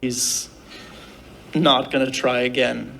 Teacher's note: E aí, como é uma expressão longa, eles acabam reduzindo, eles acabam juntando as palavras. Uma das formas de juntar isso é juntar o going com o to e você vai pronunciar gonna.